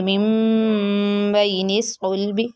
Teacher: کے ساتھ غنہ کے ساتھ بدل کر پڑھیں گے، ٹھیک ہے، با کو میم سے بدل دیں گے اور غنہ کر کے پڑھیں گے